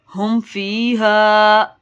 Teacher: میم ساکن کے بعد فا ہے، گنہ نہیں کرنا